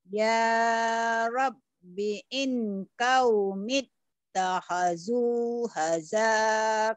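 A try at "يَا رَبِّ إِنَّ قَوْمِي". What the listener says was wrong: Salah. Aduh, ini belum tahu panjang pendeknya. Kadang-kadang benar, kadang-kadang salah. Ini panjang pendeknya nih. Ini kan panjang. Ya. Takhadu. Ya Rabbi inna qaumi ittakhadhu hadal Qur'ana mahjura.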